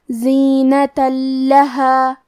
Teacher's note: کلمت لہم، لام حروف الادغام بغیر غنہ میں سے ہے اور ادغام کا معنی ہے حرف کو حرف میں داخل کرنا، تو ہم یہ تنوین کو لام میں ملا کے بغیر غنہ سے لیکن تشدید کے ساتھ یہ حکم کو ادا کریں گے